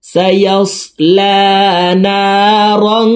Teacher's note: সায়াসলা, লামের উপরে খাড়া জবর আছে, লাম হরফকে উপরের দিকে ধাবিত করে 1 আলিফ টানে পড়ব। না রং, না 1 আলিফ টান।